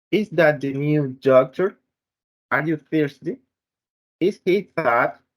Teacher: Rising intonation is common in the yes or no questions.